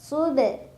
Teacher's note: ada qalqalah sugra karena ada huruf qalqalah yaitu ba yang sukunnya sukun asli, dibacanya dipantulkan tapi pantulannya kecil.